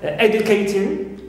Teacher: we stress always a clear first syllable and not ting, which is neutral